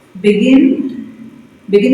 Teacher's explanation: begin is a verb. Yes, two syllable verb. So you stress the last syllable.